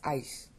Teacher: the S at the end has a little bit of a sh sound on it. It's not an S-H, and it's not really an S, and it's not really a hiss. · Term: softened S